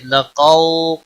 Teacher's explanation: لقو قاف روب مستعلیہ میں سے پر پڑا جائے گا. واو لین ہے تھوڑا نرمی کے ساتھ کھینچ کر ادا کریں گے